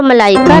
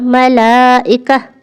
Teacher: حمزہ پر ہلکا سا نرمی کے ساتھ جھٹکا ادا ہو۔ اب ایک یونیک طریقے سے میں آپ کو مثال دوں، حمزہ سیدھی آواز نہیں ہے، یعنی بالکل اسٹریٹ فارورڈ ادا نہیں ہوتا، یہ تھوڑی سی آواز کو توڑتا ہے، بالکل ہلکا سا آواز کو توڑتا ہے، یہ آواز کا بریک ہے۔